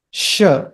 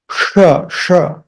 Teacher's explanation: The first one is sh. It's not a retroflex. It's not a murdha. You're not twisting your tongue. Sh. This you are twisting your tongue upwards.